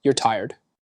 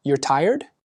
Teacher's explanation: I said that as a statement with a downward tone. I'm telling you that you are tired. · I said that as a question with an upward tone.